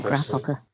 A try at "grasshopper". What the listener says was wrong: grasshopper. Grasshopper. Not shop, but grasshopper. Grasshopper. You don't say the shop. Grasshopper. Do you hear it?